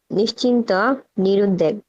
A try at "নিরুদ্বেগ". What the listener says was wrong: দুইটা না নিরুদ্বেগ। হ্যাঁ, এইখানে যে দয়ের নিচে ব আছে এই বটা পড়তে হবে। হ্যাঁ, কোনো কোনো জিনিস ব আছে পড়তে হয় না, কিন্তু এটা পড়তে হবে নিরুদ্বেগ।